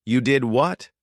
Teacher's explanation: Rising intonation to show surprise.